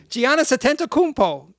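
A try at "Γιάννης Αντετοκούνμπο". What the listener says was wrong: you're skipping syllables, I believe.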